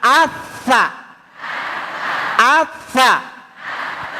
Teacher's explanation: Harus ada angin keluar tidak boleh ada bunyi es.